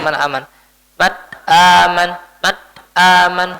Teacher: Idhar halqi. Maka kita baca dengan idhar, kita baca dengan jelas nunnya.